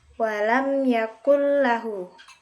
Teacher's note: Selanjutnya idgham bila idgham bila terjadi apabila nun sukun atau tanwin bertemu dengan salah satu huruf hijaiyah yaitu lam dan ro di lain kata maka cara membacanya dimasukkan tanpa berdengung